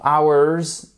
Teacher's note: alright j'ai oublié de vous dire faire très attention hours ici on n'entend pas le H celui-ci ne se prononce pas